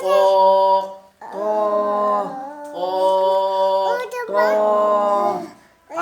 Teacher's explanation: اب تا او ایک ہی چیز ہے، لیکن تا کو ہم باریک پڑھ رہے ہیں اور طا کو ہم پر یعنی موٹا پڑھ رہے ہیں